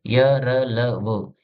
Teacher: अंतस्थ व्यंजन जिन व्यंजनों का उच्चारण उच्चारण में जीभ मुख के किसी भाग को नहीं छूती और हवा बिना रगड़ खाते हुए मुंह से बाहर निकल जाती है, उन्हें अंतस्थ व्यंजन कहते हैं।